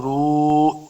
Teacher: فرون، را پیش واو، رو، واو مدہ ہے، دو حرکات لمبا کرنا ہے، را کو پر پڑھیں گے